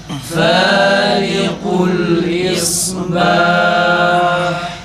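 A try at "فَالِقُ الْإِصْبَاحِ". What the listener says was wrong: Bir daha okuyalım. Ha harfi tam çıksın boğazdan.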